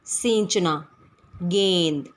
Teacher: आवाज़ हमारे मुख और नाक दोनों से निकल रही है, लेकिन वहाँ पर हम चंद्र बिंदु का प्रयोग नहीं कर पा रहे हैं क्योंकि यहाँ मात्राएं लगी हुई हैं, तो यहाँ अनुस्वार का प्रयोग यानी बिंदी का प्रयोग किया गया है।